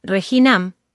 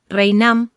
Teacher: una síncopa de la consonante intervocálica G, la cual cae dejando la palabra reinam.